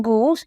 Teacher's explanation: as it is in goose, it is a high back vowel.